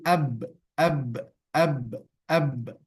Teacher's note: Misalnya kita ambil huruf yang tidak ada pada huruf hamas, yaitu huruf ba misalnya. Maka ba sifat pertamanya adalah jahar. Dia tertahan nafas ketika mengucapkan hurufnya.